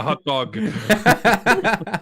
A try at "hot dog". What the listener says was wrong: No, you're pronouncing the H too much.